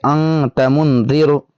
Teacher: اخفاء جو ہم کریں گے یہ کتنی دیر تک کرنا ہوگا، تو اس کو ہم 1 الف کے برابر یعنی 1 سیکنڈ تک ہم کریں گے